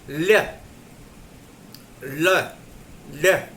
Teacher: जीभ अंदर की तरफ मुड़ती है और प्राणवायु जो आने वाली है दोनों बगल से जो उसके रास्ते से निकल जाती है। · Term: पार्श्विक